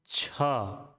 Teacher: छ बोलेंगे तो एकदम से सीटी की तरह बहुत तेज गति से आपके मुंह से वायु निकलेगी